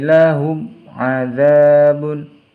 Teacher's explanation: ada mim sukun bertemu dengan huruf ain, jadi harus dibaca jelas, dinamakan izhar syafawi. Karena di sini yang disukunkan adalah huruf mim, bukan nun atau tanwin.